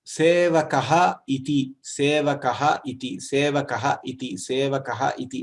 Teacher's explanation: The visarga is coming from the kantha.